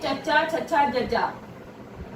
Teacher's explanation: साडे दंद पठार और सखत तालू के दरमियान साडी जीभ रोक लैंदी है और फिर हवा नूं छड्डदी है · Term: तालवी धुनियां